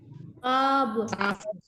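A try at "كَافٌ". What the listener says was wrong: Nah, tadi qaf tebal. Qafun. Sekarang kaf tipis. Kafun.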